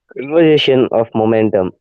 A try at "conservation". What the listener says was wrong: Conservation. conservation, not conversation. is conservation.